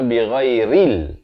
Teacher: Ra baris bawah bunyi ri, bukan bunyi re. Jadi bila bertemu lam yang bertanda mati jadi ril, bukannya ril.